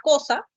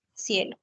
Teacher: La letra C va a representar a la oclusiva velar sorda, por ejemplo, en la palabra cosa, o va a representar a la fricativa interdental sorda, por ejemplo, en la palabra cielo.